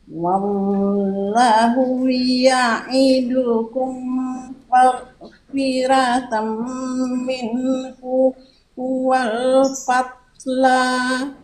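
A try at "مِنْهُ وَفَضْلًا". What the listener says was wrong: Nggak pakai wal, wajah. Minhu wa fadla.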